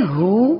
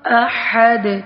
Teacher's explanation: ہو اقصی حلق سے ادا ہو رہا ہے، احد وسط حلق سے ادا ہو رہا ہے